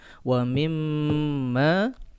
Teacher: ini dengung, ya, dua ketukan seperti biasa. Wa mimma, ketukan ketiga lepas.